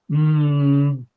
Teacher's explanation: is it a nasal sound the lips are closed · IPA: m